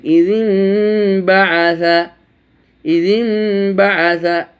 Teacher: নুন সাকিন অথবা তানমিনের পর যদি বা আসে তখন নুন সাকিন অথবা তানমিনের উচ্চারণটিকে পড়তে হবে মিম দিয়ে। এখানে নুন সাকিনের পরে বা এসেছে, এখন ইজিন ছিল আসলে, ইজিন বা আসা, ইজিন বা আসা এটা ছিল মূলত, কিন্তু যেহেতু ইকলাব হয়ে গেছে তাকে পাল্টিয়ে দিতে হবে, পড়তে হবে, তখন এই মিম দিয়ে পড়তেছি।